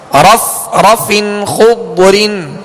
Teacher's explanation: فا کے نیچے دو زیر کی تنوین ہے, آگے حرف خا ہے اور حرف خا حروف حلقی میں سے, لہذا یہاں پر اظہار کریں گے, غنہ نہیں کریں گے